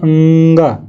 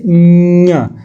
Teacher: नाक और मुख के सहारे बोले जाते हैं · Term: नासिक के व्यंजन